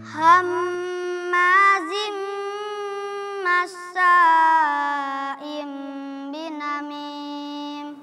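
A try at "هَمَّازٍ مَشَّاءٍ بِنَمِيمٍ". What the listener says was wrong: Baik, di sini kenapa tidak terdengar makhraj huruf shin atau kenapa shinnya itu kurang tasydid? Karena makhrajnya salah. Ya, makhrajnya itu dari depan, itu makhraj huruf sin. Sedangkan huruf shin dia dari tengah-tengah lidah. Jadi anginnya keluar dari semua lubang-lubang antara gigi itu semua keluar. Kalau itu cuma dari bagian depan saja.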